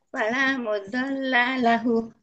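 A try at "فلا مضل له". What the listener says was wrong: bukan mudalla, Om, isim fa'il. Mudil,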